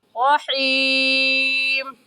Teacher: हा को हलक के दरमियानी हिस्से से निकालेंगे